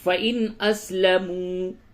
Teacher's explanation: نون ساکن کے بعد حمزہ آ گیا، یہاں پہ اظہار ہوگا، یعنی نون کی آواز کو بالکل ظاہر کر کے پڑھیں گے